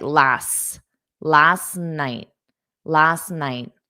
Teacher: So, again, you're not going to pronounce the T's because it will force you to take a pause.